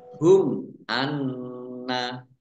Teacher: mim sukun bertemu dengan huruf alif bacaan izhar syafawi dibaca jelas